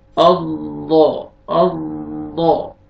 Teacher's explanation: left side پہ اور right side سے بھی نکل سکتا ہے، لیکن لیفٹ سائڈ پہ جو اوپر والی داڑھی ہیں وہاں پہ زبان کی سائڈ جو ہے نا وہ لگا کے ضاد ادا کرتے ہیں